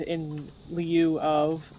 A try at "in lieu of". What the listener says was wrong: did you just pronounce Lu as Liu? No. No.